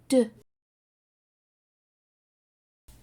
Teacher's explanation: When you make the d sound, like at the beginning of the word dog, you make it in the same way as t, except your voice is turned on.